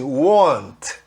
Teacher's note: want, não tem som de T, e logo depois, se vier um to, que começa com T, em vez de falar want to, eu falo want to.